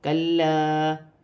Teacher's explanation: لام کو جماؤں کے ساتھ پڑھا جائے گا اور الف مدہ بھی بن رہا ہے، اور ایک الف کی مقدار کھینچ کر بھی پڑھا جائے گا، جیسے کلا۔ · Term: لام مشدد